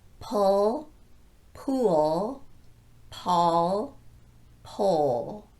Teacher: each of these words requires a dark L at the end because that L is following a vowel · for the dark L we anchor the tip of our tongue on the back of the lower front teeth not the upper teeth